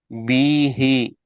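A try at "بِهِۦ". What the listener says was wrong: बी को एक हरकत है, ही को 2 हरकत है। बी छोटा, बीही, टच करना, जेर ज़बर पेश को टच करना। बी खींचे गया नहीं, बी ही टच करना, बी ही।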